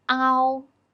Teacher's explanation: Pronunciation is a transition from a to o. A is the main vowel. We pull our tongue a bit back when we pronounce a here.